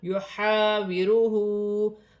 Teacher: ہا حروف حلقی میں سے حلق سے ادا کیا جائے گا · ہا پر الٹی پیش بھی اور چھوٹی مد بھی ہے، مد منفصل، اسے 3 الف کی مقدار تک کھینچ کر پڑھا جائے گا